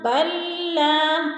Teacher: لام ساکن کو نہیں پڑھنا، با کو لام کے ساتھ ملانا ہے۔ با لام زبر بل، لام الف زبر لا، بل لا، اس طرح ادا کرنا ہے۔ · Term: ادغام